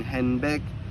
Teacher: the N sound normally produced at the alveolar ridge becomes N produced at the lips because the following B is also bilabial. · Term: place assimilation